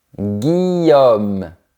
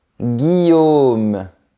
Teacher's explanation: C'est un son plus fermé à la fin.